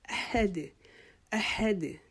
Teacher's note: हमारी आवाज़ जो है वापस हमारे गले में लौट के आए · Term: कलकला